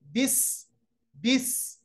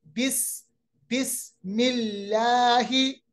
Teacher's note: सीन का मखरज जो है वो है जबान की नोक, यानी जो जबान का हमारा आगे वाला हिस्सा है, नोक के लिसान, टिप ऑफ द टंग।